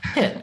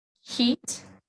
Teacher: a lot of native Spanish speakers have a hard time pronouncing the short I sound. They'll pronounce it like E. So they'll say both of these words in the same way.